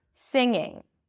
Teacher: No g's no g sound whatsoever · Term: ing suffix